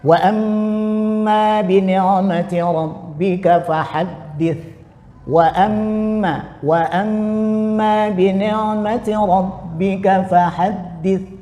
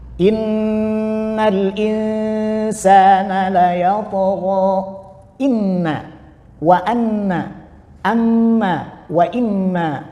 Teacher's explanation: Terjadi pada mim dan nun bertasydid. Nah, ketika terjadi pada mim dan nun bertasydid maka gunahnya sempurna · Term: ghunah kamil